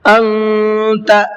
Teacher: نون ساکن کے بعد میں تا ہے تو یہاں پر تھوڑا سا آواز کو ناک میں روک کر کے پڑھنا ہے